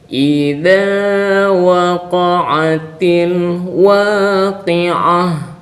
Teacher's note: Jadi makharijul hurufnya itu ini dza di ujung lidah